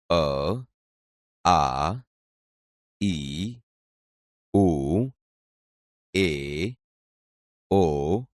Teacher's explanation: આ ધ્વનિ મોઢામાં અવરોધાયા સિવાય સીધો જ સ્વર પેટીમાંથી આવતો અનુભવાય છે જેને સ્વર કહે છે હવે અહીં આપેલી બીજી આકૃતિઓ જુઓ મો